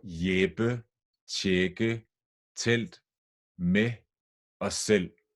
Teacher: they are all written with e but they are pronounced with an A just one step further down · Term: short vowels